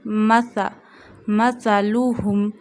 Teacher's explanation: مثلهم Mim fatha ma, sa fatha sa. We read sa without whistle sound voice. We read it from the tip of the tongue touching the inner edges of top two front teeth. Read it very softly.